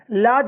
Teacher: प्रयत्न के आधार पर ल जो है यह पार्श्विक व्यंजन है